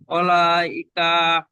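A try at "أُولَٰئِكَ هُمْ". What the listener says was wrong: দেখে দেখে পড়েন, উলাইকা হুম আছে, হার উপরে পেশ আছে, নিচে জের নেই, আবার আপনি বলছেন ওয়ালাইকা, উলাইকা।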